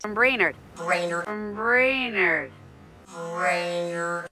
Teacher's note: You can hear the sound A, and you also get that strong rhotic R.